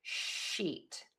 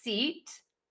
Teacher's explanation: the SH sound, you have rounded lips. And for the S sound, you have more smiling lips.